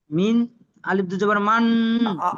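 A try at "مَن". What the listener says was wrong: আলিফটা পড়তে হবে না, মিম দুজাবার মান, ইয়াতি মান, পড়েন।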